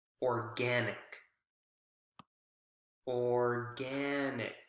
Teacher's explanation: gen is the strong syllable and it makes sense because it comes right before the added suffix